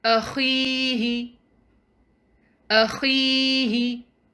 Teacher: We also see a ya, which has sukoon, and it's preceded by kasra. So this is a ya mad. So we're going to prolong letter kha up to 2 counts.